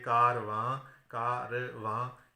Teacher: نون غنہ جو ہے یہ الگ سے اپنی آواز نہیں دیتا، اس وجہ سے یہ وزن میں شمار نہیں ہوگا.